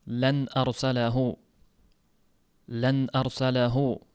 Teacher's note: nun va hamzani izhor qilib, aniq bildirib o'qilinadi